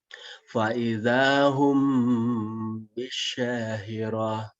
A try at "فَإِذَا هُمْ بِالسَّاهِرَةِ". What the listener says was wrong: فإذا هم بالساهرة. Sin biasa.